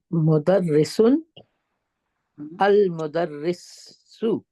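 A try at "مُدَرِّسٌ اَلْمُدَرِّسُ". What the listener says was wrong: Very good. Correct.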